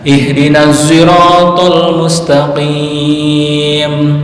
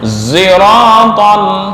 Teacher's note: Sad campuran dengan za. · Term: Ishmam